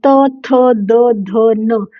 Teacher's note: जब हम इनका उच्चारण करते हैं, इनको प्रोनाउंस करते हैं तो एक जैसा आवाज आती है। त थ आपकी जो टंग है, जो जीभ है वो आपके दांतों के पीछे जाकर जो आपके दांत हैं उनके पीछे जाकर आपकी टंग टच होती है जब आप ये पूरी लाइन बोलते हो।